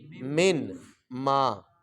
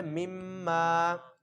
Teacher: پہلے کیا تھا من ما، من ما تھا، تو نون کو پہلے میم سے بدلا، پھر میم کا میم میں کیا کر دیا ادغام، اس کے اوپر شد آ گیا تو نون ختم ہو گیا درمیان میں